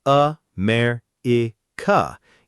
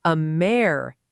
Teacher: with a schwa at the very beginning and another one right at the end